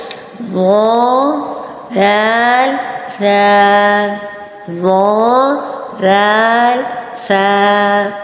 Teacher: دانتوں کا جو اوپر والا حصہ ہے اس کے اندرونی کنارے سے، یعنی کہ زبان باہر لٹک جائے، ایسا نہیں ہے. زبان کا سرا ہے یعنی زبان کے بالکل آگے والا حصہ، اور اوپر کے جو دانت ہیں ان کے اندرونی کنارے سے ادا ہوں گے